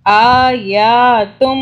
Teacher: میم پہ تشدید ہے، میم کے اوپر آپ نے گنہ کرنا 2 سے 3 سیکنڈ کا